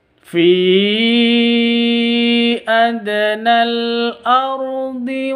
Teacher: Fi panjang awalnya dua harakat dua ketuk terus karena ada layarnya artinya ada Mad bertemu dengan Hamzah ya